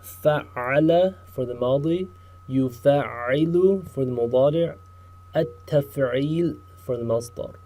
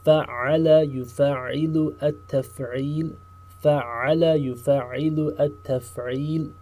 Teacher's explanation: Notice the unique characteristic about Form 2 is the shadda. The shadda on top of the middle root letter. This creates a doubling of the sound